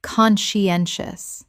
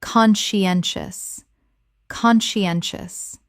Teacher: Four syllables with the stress on the third,